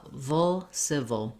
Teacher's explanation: we move quickly uh from the right to the o sound it's that dark or syllabic l you can think of it as having a little bit of an uh or a schwa sound in there